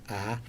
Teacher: which have the jaw open this one's a front sound ah so the lips are quite spread and the tongue is front